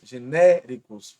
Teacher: genéricos, proparoxítonas, antepenúltima, a mais forte